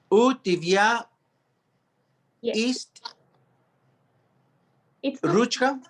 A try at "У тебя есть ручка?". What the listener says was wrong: Good. Now it's correct.